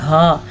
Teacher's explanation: یہ نکلتا ہے سینے کے آخری والے حلق کے آخری حصے سے